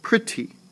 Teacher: I go down on the T so that syllable would be unstressed